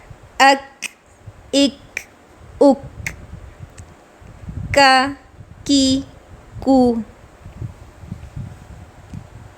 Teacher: کاف میں ہلکا سا ایئر فلو ہوتا ہے، ہلکا سا یہ ساؤنڈ پایا جاتا ہے.